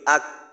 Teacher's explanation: যদি কাফ কে জজম দিয়ে উচ্চারণ করি আক তাহলে দেখা যায় কাফের উচ্চারণটা জিহ্বার গোড়ার থেকে একটু সামনের অংশে আটকায়